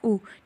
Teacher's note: तो औष्ठ वर्ण है हमारा उ।